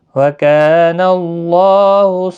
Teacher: وَكَانَ اللَّهُ کا الف مدہ ہے، ایک الف کی مقدار کے برابر کھینچ کر پڑھیں گے۔ اللہ کا لام زبر کی وجہ سے پر پڑھا جائے گا